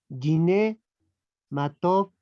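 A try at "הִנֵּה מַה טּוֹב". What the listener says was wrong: Gine, como suena como una J. Esta es una G aspirada, ¿verdad?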